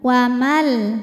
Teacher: bertemu dengan huruf lam maka nunnya dimasukkan ke lam tanpa dengung